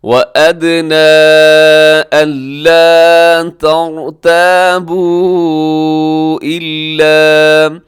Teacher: را ساکن سے پہلے زبر آ گئی تو را تو موٹی پڑی جائے گی